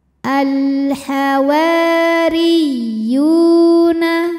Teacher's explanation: Huruf ra dibunyikan secara tartik sebab ra berharokat kasroh. Cara bacanya ra dibaca tipis, pangkal lidah datar.